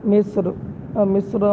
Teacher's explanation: مصر میں را کے آخر پر زبر ہے تو یہاں پر اس کو موٹا پڑھا جائے